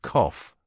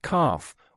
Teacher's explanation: The main difference is in the vowel sound, with British English using a short O and American English using a broad A.